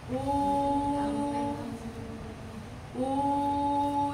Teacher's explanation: jadi bunyinya u jangan sampai O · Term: domah